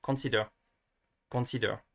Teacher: you would remove that breath that you add to the the K